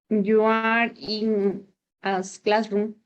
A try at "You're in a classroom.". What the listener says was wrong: Claro, pero como está contraída, se pronuncia you're in a classroom. Mira, si estuviera con la A, si estuviera you are, sería así. You are. Lo que yo te estoy pidiendo es your.